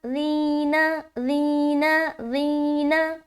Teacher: ری میں نرمی اور بغیر سیٹی کے ادا کرنا ہے، ٹھیک ہے، اور موٹا نہیں کرنا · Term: باریک